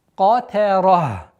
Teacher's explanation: Та мягкая, обратите внимание, между двумя твердыми. Катара. При остановке танвин аннулируется, и та марбута переходит в сукун.